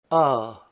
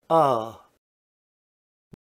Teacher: Open mid back unrounded vowel